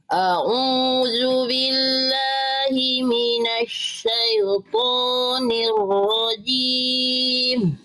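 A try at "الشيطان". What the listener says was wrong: Bagus Bunda, tinggal jelaskan syai. Syai-nya jelaskan. Ya sukunnya. Syai, linnya di sana jelaskan. Jangan syai. Syai. Minasy syaithanir rajim.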